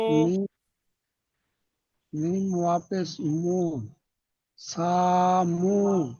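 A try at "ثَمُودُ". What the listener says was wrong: সা টান হবে না সার উপরে জবর আছে টান হবে না সামু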